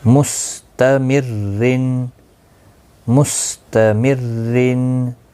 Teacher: میم سین پیش مس، تا زبر تا، میم را زیر مر، را دو زیر رن، مستمرن، مستمرن۔ تنوین کی وجہ سے دو زیر کی وجہ سے باریک پڑھا جائے گا